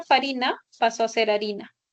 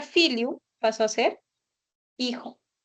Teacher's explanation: La F inicial latina se dejó de pronunciar y fue sustituida por H en la escritura.